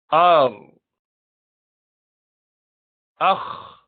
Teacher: اوپر جا کے زبان کی جڑ لگ گئی